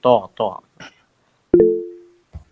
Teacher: ത്വ എന്ന് ഉച്ചരിക്കുന്നത് മുകളിൽ നിന്ന് മുൻ പല്ലിന്റെ മുകളിൽ നിന്ന്